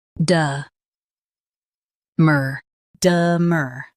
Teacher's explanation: Keep de soft and stress mur.